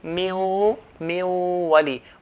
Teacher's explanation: pronounce the waw with 2 types of sound. One, the pronunciation of the waw from the mouth, lips, and then a nasalization sound at the same time. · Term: ghunna